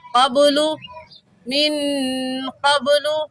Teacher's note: اور قبلوں میں با حروف قلقلہ میں سے ہے، قلقلہ کریں گے یعنی با کو ہلا کر پڑھیں گے، ایسے قبل من قبل لفی ضلال مبین۔